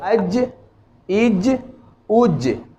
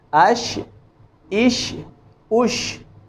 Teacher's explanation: جیم کی ادائیگی میں زبان کا جو درمیانی حصہ ہے یہ بالکل اس کے اوپر جو تالو ہے اس کو مس کرے گا، چھوئے گا، لیکن شین اور یا کی ادائیگی میں بالکل مس نہیں کرے گا، تھوڑا سا خلا باقی رہے گا، تالو کی طرف زبان کا درمیانی حصہ اوپر اٹھے گا، البتہ اس میں تھوڑا سا خلا باقی رہے گا جہاں سے شین اور یا کی ہوا گزرے گی، آواز گزرے گی۔